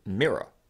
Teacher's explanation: commonly the sound you hear in the word mirror, i.e. the kit vowel followed by r.